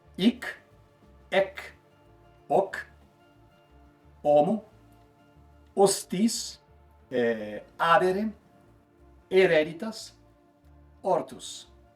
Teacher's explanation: Com o passar dos séculos, no latim tardio, o H se tornou uma letra muda. No latim eclesiástico, que ainda é bastante utilizado hoje nas igrejas católicas, o H é quase sempre mudo, silencioso. Alguns exemplos fundamentais que ainda usamos ou herdamos podem ser hic, ec, hoc, homo, hostis, adere, hereditas, ortus.